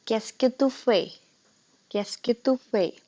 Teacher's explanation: we have skipped a vowel because the other word was starting with a vowel. So we skip or drop the vowel of the first word and replace it with the apostrophe.